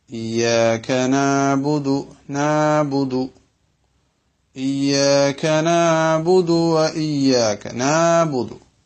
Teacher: ഇയ്യാക നഅ്ബുദു, ഇവിടെ ഐന് സ്വഹീഹല്ലാതെ ആയിപ്പോകുന്ന രണ്ട് മിസ്റ്റേക്കുകളാണ് സാധാരണഗതിയിൽ ആളുകളിൽ നിന്ന് കേൾക്കുന്നത്. ഒന്ന്, ഐന് തീരെ ഉച്ചരിക്കാതെ തൊണ്ടയുടെ മധ്യത്തിലേക്ക് തീരെ നമ്മൾ ഉച്ചാരണം കൊടുക്കാതെ വെറും അലിഫായിട്ട് ഉച്ചരിക്കുക